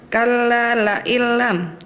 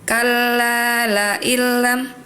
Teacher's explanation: Harusnya dipanjangin dulu dua harakat